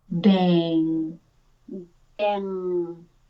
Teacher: Yeah, let the diphthong happen longer than the NG. So let the vowel part happen longer and the NG just be the ending